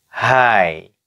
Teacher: Jadi si mulutnya itu udah mau suara A berarti ini ya, walaupun tulisannya I.